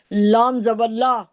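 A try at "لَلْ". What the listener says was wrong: लाम जबर नहीं है। अब देखें, लाम के ऊपर जबर तो है, लेकिन आपको अगला हर्फ भी देखना है। अगर आगे वाले के ऊपर कोई सुकून है या जज्म, तशदीद है, तो आप पहले वाले को दूसरे से मिलाना पड़ेगा।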